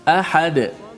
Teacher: Ahadun, bunyi dun tu, bunyi suara nun mati pada tanwin tu, ahadun illa. Tapi kalau kita berhenti pada ahadun, tanwin tu, nun tu dah tak ada. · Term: wakaf